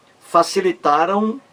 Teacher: o verbo facilitaram Aí termina em ditongo nasal